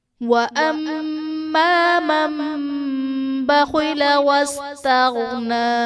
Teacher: وَأَمَّا مَن بَخِلَ وَاسْتَغْنَى، من بخل میں نون ساکن کے بعد حرف با ہے، تو یہاں پر نون ساکن کو ہم میم سے بدل کر اخفا کریں گے، یعنی غنہ کر کے پڑھیں گے، یہاں پر اقلاب کا قاعدہ ہوگا۔